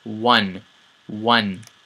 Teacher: when you say the W, your lips round at the beginning.